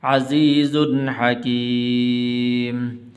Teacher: یہاں پر غنہ نہیں کریں گے اس لیے کہ آگے حا حروف حلقی میں سے ہے